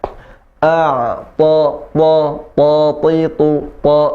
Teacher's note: Huruf ta makhrajnya ada di ujung lidah bertemu dengan pangkal gigi seri atas, maka ditekan di situ. Ujung lidah ke pangkal gigi seri atas.